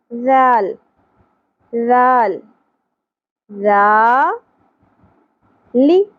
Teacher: ذال کی ادائیگی میں سیٹی کی آواز نہیں آنی چاہیے، جیسے رو کے بعد ز ہوتا ہے تو اس طرح نہیں ادا کرنا، نرمی سے۔ ذال ذال ذا لی، ایک حرکت ہے، زیادہ نہیں کھینچنا.